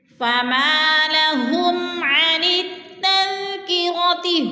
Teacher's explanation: فما لهم، فما لهم عن التذکرۃ، ہم پہ اظہار شفوی ہو رہا ہے، میم ساکن کے بعد عین حروف ہلکی میں سے آ گیا ہے تو ادھر اظہار ہو رہا ہے